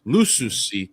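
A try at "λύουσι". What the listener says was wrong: You stuck a sigma in there. There actually isn't a sigma. I mean, I pronounce that word as liusi, so I have like different. But for you, it would be luusi, and you would have one of them would be fronted u, and the other one would be the back of your mouth u.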